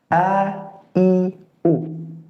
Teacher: Jadi kalau pelafatannya seperti a, i, u. Dan jangan sampai huruf A ini keluar dari rongga hidung atau al-khayshum, jadi sengau. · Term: huruf hamzah